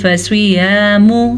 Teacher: سواد کو پر پڑھنا ہے کیونکہ سواد حروف مستعلیہ میں سے ہے